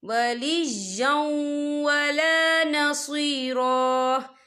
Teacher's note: وَلَا يَجِدْ لَهُ مِن دُونِ اللَّهِ وَلِيًّا وَلَا نَصِيرًا، یا دیکھیں وَلِيًّا، یا کے پر تنوین ہے، تنوین کے بعد جو ہے واو آ رہا ہے، اور واو جو ہے حروف یرملون میں سے ہے، تو یہاں پر ادغام ہوگا، تو ہم اسے تھوڑا سا غنی کے ساتھ پڑھیں گے